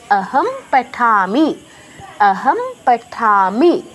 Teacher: তো প বর্গের অনুনাসিক ধ্বনি ম। তাই আমি অনুসারের জায়গায় ম হসন্ত উচ্চারণ করছি।